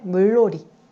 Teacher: 니은이 리을과 만나서 롤이라고 바뀌죠. 유음화.